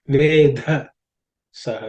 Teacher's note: Vedha again is the fourth letter in the tha varga, so it has to be aspirated.